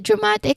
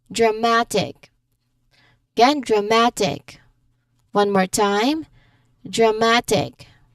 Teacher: Stress falls just before ik. So here the stress is on the second syllable from the end